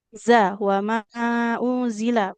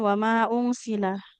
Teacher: kalau dari makhrajnya memang sama antara zai dengan sin